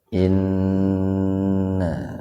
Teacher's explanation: Inna gunnah, ada nun bertasdid itu gunnah. Gunnah itu mendengung, tahan dua ketukan